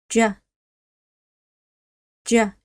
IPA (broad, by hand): j